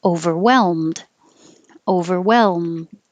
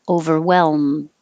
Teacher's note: So hold your tongue in the L position, overwhelm, and hold your L and keep making the L noise as you close your lips for the M. And then the L and the D are made in exactly the same place, so you're already ready for the D.